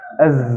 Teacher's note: Zai tetap ada udara tapi tidak sederas sifat Hans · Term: sifat jahr